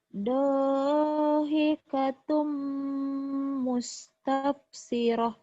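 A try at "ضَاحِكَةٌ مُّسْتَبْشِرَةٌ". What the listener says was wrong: dhahikatum mustabsyirah. Kol-kolahnya keluarin sama sinnya belum keluar. Dhahikatum mustabsyirah.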